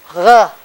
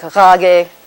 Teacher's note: It's a voiced velar fricative